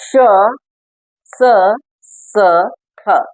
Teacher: एक तरीके से ये रगड़ खाते हुए हमारे मुंह से निकल रहे हैं। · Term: ऊष्म व्यंजन